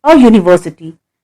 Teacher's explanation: Here the word begins with the consonant sound of Y